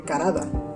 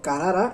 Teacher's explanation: un sonido alveolar oclusivo sonoro se cambia por un sonido retroflejo aproximante sonoro